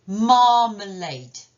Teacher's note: Là encore, accent principal sur la première syllabe. Donc, c'est celle-ci que je dois vraiment accentuer.